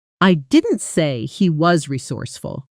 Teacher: With stress on resourceful, it suggests you described him differently, maybe as lucky instead of skilled. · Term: sentence stress